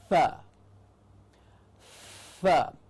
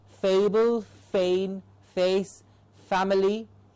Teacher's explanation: So anytime one of us teachers has to correct any student or make sure that the sound is being produced absolutely correctly, we need to say only the lower lip and the top teeth come in contact, a labiodental sound to give us the sound of f.